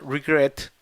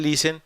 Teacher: tiene el acento en la segunda sílaba, mientras que el listen tiene el acento en la primera